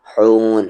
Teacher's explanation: ہون نہیں کہیں، حون مڈل تھروٹ سے